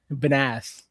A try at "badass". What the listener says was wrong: Badass. Why are you putting the wrong emphasis on the wrong syllable?